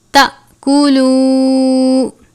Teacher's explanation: الف کے اوپر حمزہ نہیں ہے، صرف جزم ہے لیکن ہم اس کو بھی تھوڑا جھٹکا دے کر ادا کریں گے